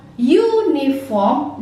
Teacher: di sana ada penekanan U. Jadi seolah-olah dia seperti huruf Y gitu.